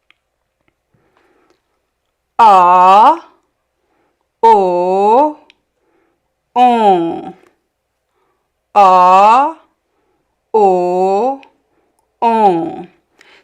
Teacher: the air passes through the nose to create this nasal sound.